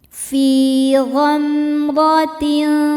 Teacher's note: Dibaca secara tafkhim karena berharakat fathah. Cara bacanya ditebalkan.